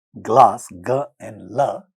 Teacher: You can note here that g and la have 2 different places of articulations. G is a velar sound, la is a lateral liquid sound.